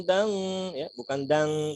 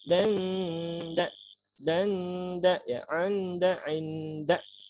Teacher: kita bunyikan suara n tapi di makhraj huruf berikut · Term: ikhfa